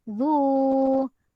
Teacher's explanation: Mad asli waw dibaca panjang 2 harokat.